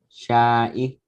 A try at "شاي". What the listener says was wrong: No, there's no hamza. It's just yeah.